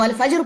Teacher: را خالی کر دیتے ہیں، زبر اس کی زیر اس کی ڈراپ کر دیتے ہیں